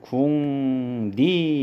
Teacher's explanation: 이응이 비음이고 리을이 유음인데 요 리을이 비음 니은으로 바뀐 거예요. 그래서 이런 경우는 우리가 비음화 이렇게 부를 수 있는 거기 때문에 이것도 이제 음운 축약과는 관계가 없다.